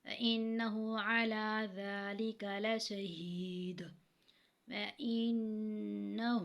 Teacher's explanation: إِنَّهُ، ہاں پہ الٹا پیش ہے، ٹھیک ہے، اور نون پہ جو ہے غنہ ہوا کیونکہ نون مشدد ہے